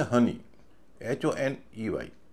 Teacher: इसमें ओ का उच्चारण अ हो रहा है। अ क्या है? छोटा स्वर है। और नियम क्या है कि अगर छोटा स्वर होगा तो वावल के बाद जो कॉन्सोनेंट है वहाँ से शब्द बढ़ेगा, इसलिए यहाँ पर ओ के बाद जो कॉन्सोनेंट है वहाँ से शब्द बढ़ेगा HONEY।